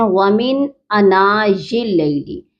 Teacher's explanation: انا کے الف کے اوپر کھڑی حرکت ہے تو یہ کھینچ کر پڑھی جائے گی، تو ہم اس کو ایک الف جتنا لمبا کھینچیں گے